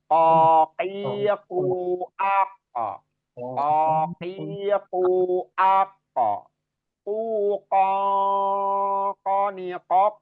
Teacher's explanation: Jadi itu tempatnya di pangkal lidah atau lidah bagian dalam terdalam dari lidah kita. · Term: huruf q